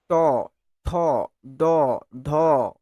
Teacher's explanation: যে সকল ব্যঞ্জন ধ্বনি উচ্চারণ করার সময় জিহার অগ্রভাগ মানে ওই যে ডগটা একদম ডগটা ওই ডগটা উল্টে গিয়ে সর্বোচ্চ তালু মূর্ধাকে স্পর্শ করে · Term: মূর্ধন্য ব্যঞ্জন